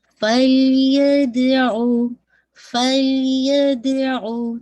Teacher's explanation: دال پہ قلقلہ، لام پہ باؤنس نہیں کیجیے گا